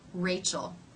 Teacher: if the r comes at the beginning of a word like in my name Rachel the lips may take a very tight circle